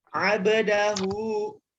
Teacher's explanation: Harokatnya fathah, dia bukan sukun. Maka hu-nya dibaca 2 harakat, istilahnya adalah mad silah qasirah. Ya, dibacanya 2 harakat, panjang 2 harakat.